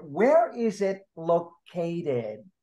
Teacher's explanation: With the WH questions, you use the falling intonation. You use the falling intonation means at the end of the sentence, you go down. You do not go up, you go down.